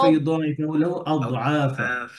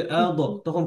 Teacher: দদের মধ্যে কি নাই? কলকলা নাই, রখাওয়া আছে, আওয়াজ চলবে।